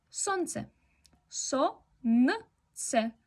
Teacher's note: No pronunciamos la L, sonce.